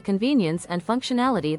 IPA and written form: kənˈviː.ni.əns ənd ˌfʌŋk.ʃəˈnæl.ə.ti (Convenience and functionality)